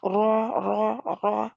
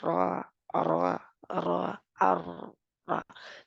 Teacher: ऊपर वाले 2 दांतों के दरमियान उबरी जगह पर जुबान लगती है। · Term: राय मजहूरा